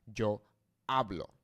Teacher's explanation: So we have, this is our last vowel, and this is our second to last vowel. So naturally, without an accent on this word, the emphasis will fall on the second to last vowel, which in this case is A